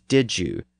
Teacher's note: when we say, did you, really fast, we sometimes convert the Y sound to a J sound